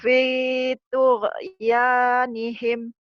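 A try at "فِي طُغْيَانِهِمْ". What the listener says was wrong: G-nya jangan dikolok-kolakan ya. Tuh. Jangan tuge. Ya nihim.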